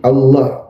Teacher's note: Allah dibaca tafkhim tebal